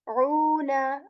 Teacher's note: I'm stretching u here for 2 counts again because we see a vowel madda here